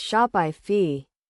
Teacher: The correct pronunciation is Shopify, with a slight emphasis on the first syllable. It is essential to note that the pronunciation is not shop-ee or shop-ie, but rather Shopify.